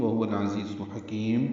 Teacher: وہوا میں دونوں واو ہونٹوں کی نا تمام گلائی سے ادا کریں گے، ہا اقصی حلق سے ادا کریں گے